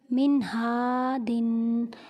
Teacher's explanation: نون ساکن کے بعد ہا حروف ہلکی میں سے ہے، اسی لیے یہاں پر غنہ نہیں کریں گے